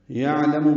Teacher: عین ساکن پہ اظہار ہے عین کی ظاہر کر کے پڑھیں گے. لام میم جلدی ادا کریں گے.